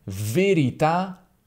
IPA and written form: veriˈta (verità)